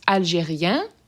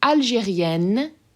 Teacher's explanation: Algérien, open, sort of nasally end sound, and Algérienne, closed end sound where you're actually pronouncing them